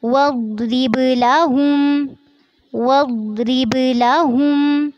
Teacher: वद्रिब लहुम, इसमें दौत को आपने पुर करना है और ध्यान रखना है कि इस पे झटका ना हो, वद्रिब ना हो।